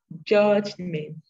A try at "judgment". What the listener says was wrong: I'm not hearing my T. Judgment.